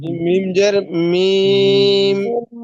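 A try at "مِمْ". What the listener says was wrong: টান টান হবে না ভাই, টান হবে না। মিম মিম, আপনি তো বলতেছেন মিম, এরকম না। মিম মিম জের মিম, বলেন।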